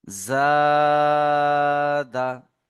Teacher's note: আলিফ মাদ্দাকে এক আলিফ পরিমাণ টান দিয়ে পড়তে হয়। · আলিফের ডান দিকে জাবার এসেছে, আলিফের ডান দিকে জাবার এসেছে, এটি আলিফ মাদ্দা, এটি আলিফ মাদ্দা। আলিফ মাদ্দাকে একালিফ পরিমাণ টান দিয়ে পড়তে হয়।